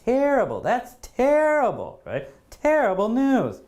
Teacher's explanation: The stress is right at the beginning of the word